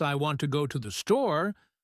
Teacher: the words want, go and store are stressed because they carry the main meaning